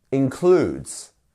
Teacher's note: stress as we've said before is on the second syllable